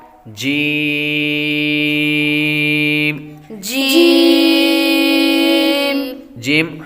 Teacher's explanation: زبان کے درمیان اور تالو کے درمیان سے